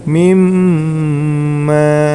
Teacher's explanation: Itu termasuk hukum bacaan idgham bi ghunnah. Maka cara membacanya langsung masuk ke huruf mim, kemudian sambil didengungkan, ya.